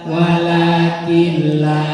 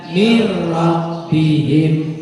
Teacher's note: Nun sukun atau tanwin bertemu lam atau ro, namanya idgham bila gunnah. Cara bacanya dibaca tidak dengung